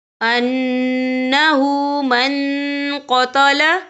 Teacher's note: نون ساکن کی آواز کو ناک میں چھپائیں گے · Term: اکفا